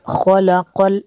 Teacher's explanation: الذی، ذال کو نرم کرنا ہے۔ خلق خو کو پر کرنا ہے، قاف کو بھی پر کرنا ہے۔